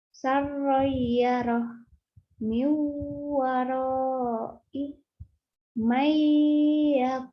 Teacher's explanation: Menurut istilah artinya jika terdapat nun mati atau tanwin bertemu dengan salah satu huruf idgham biguna. Nah, huruf mati dileburkan dengan dengung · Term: Idgham Bighunnah